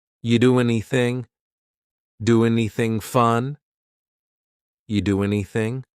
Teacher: We link together doing because we're going to drop the G. It ends with the sound n, the n sound, and then the next word anything. We sometimes drop the a and we're going to push those two together because there's two n sounds by side.